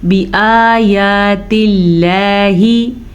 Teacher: لفظ اللہ سے پیچھے والے حرف نیچے زیر ہے تو لفظ اللہ باریک پڑھا جائے گا